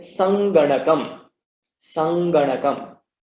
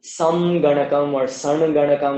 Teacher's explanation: the Anuswara takes on the nasal sound which is in the same row as Ga. So here we've got Ga, and so the nasal sound which is here is Nga, and therefore that Anuswara is also pronounced as Nga.